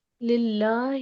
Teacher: باریک پڑھا کیونکہ لام کے نیچے زیر ہے تو باریک پڑھا جائے گا للہ